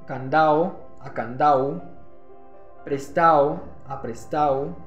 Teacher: eliminación de la consonante oclusiva en posición intervocálica en la sílaba final, lo que va a generar un cambio en las vocales como la O a una U